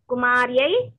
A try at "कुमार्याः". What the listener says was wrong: कुमार्या कुमार्या कुमार्या दीर्घं लेदु दीर्घं मिंगेसे अवतल्लि